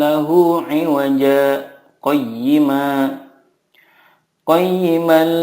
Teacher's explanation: Nah, teman-teman sekalian, dari kata iwaja ke qayyima itu ada saktah. Jadi kita tidak boleh membacanya dengan iwajang qayyima seperti itu ya, tetapi disaktahkan.